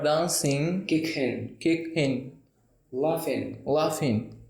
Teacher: हमें जी को साइलेंट करना है.